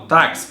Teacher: O X aqui teve o som do K e do S. Lembre-se que isso aqui é só o som, tá?